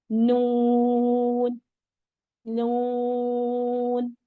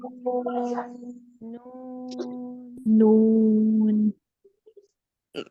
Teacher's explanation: और नून में आपने सिर्फ तीन दांतो के मसूड़ों के साथ जबान को लगाना है